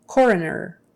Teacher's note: And it's not really coroner, it's coroner. So it's almost as if it's a short U in there for that second O.